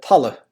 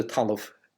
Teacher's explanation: BH, MH, DH, and GH were all dropped off at the end of words in Leinster